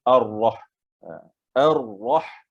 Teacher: Lam itu tidak dibunyikan. Dia ada pada penulisan tapi tiada pada bunyi. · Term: alif lam syamsiyah